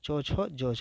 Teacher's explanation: स्पर्श संघर्षी वर्ण जो होता है च छ जझ होता है